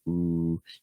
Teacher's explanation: Most likely in your first language, what happens when you make that ooh sound is your lips start to go pretty round, right? Like ooh.